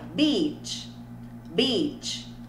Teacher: esse EA tem som de I, é um I longo, né? A gente faz até um sorrisinho falso, né? I, tá? Então, para eu falar praia, beach, beach.